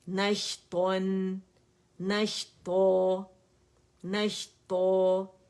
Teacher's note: تو نون باریک ہوگا, تا موٹا ہوگا.